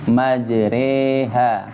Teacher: Jadi imalah ya, memiringkan harokat fathah ke harokat kasrah. Majriha. Tapi bukan kasrah, ntar antum bacanya majriha.